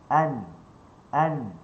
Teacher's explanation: Pertemuan hujung lidah dengan gusi dengan lelangit bagi huruf nun. Dia bertemu dalam keadaan yang sederhana.